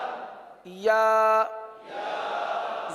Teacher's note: या या जबान का दरमियान और तालू का दरमियान